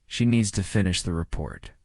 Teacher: Stress needs and report and let the small words fall quietly.